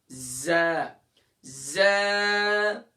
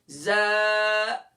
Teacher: زبان کا سرا اور دونوں دانتوں کے اندرونی کنارے سے ز اور سین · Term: مخرج